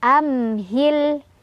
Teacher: ada mim sukun bertemu dengan huruf ha cara bacanya mimnya dibaca secara jelas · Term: Izhar Syafawi